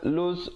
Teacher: Sayaqu 2 harakat, lus lam baris depan terus naik di atas sin yang bersabdu, di situ alif lam syamsiah, ya, lamnya tidak dibunyikan.